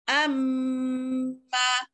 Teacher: Kalau hamzah kotak baris atas, amma, bukan ma itu dengung, am yang tu dengung, amma. Jadi tu yang kita baca tu janganlah tak dengung, kita dengunglah.